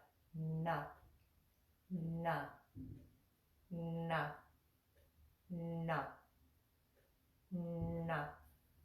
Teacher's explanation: draw that tongue back from the top of the front teeth on the palate, behind that little bump, right behind it. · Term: nasalized letter